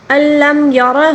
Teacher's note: را کو پر پڑھیں گے کیونکہ را کے اوپر زبر ہے، اور ہا الٹا پیش ہو، ہا کے اوپر الٹا پیش بھی ہے، اس کو ایک الف کے برابر کھینچ کر پڑھنا ہوگا، اور اس کے اوپر جو مد منفصل ہے اس کو 3 الف کے برابر کھینچ کر پڑھنا ہوگا، ٹھیک ہے؟